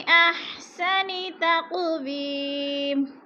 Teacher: तक़ू को हिलाकर पढ़ेंगे, हरूफ़ क़ुल में से है। और वी, वी पे या मद्दा को दो हरकत के बराबर खींच कर पढ़ना है।